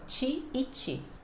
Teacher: é padrão realmente esse T chiado e esse D chiado no final de palavra